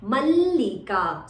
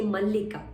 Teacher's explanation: double L is there, so give a slight stress when you say mallika